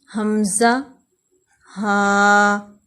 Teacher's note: انتہائی حلق سے، یعنی حلق کے آخری حصے سے، یہاں سے حمزہ اور ہا ادا ہوتے ہیں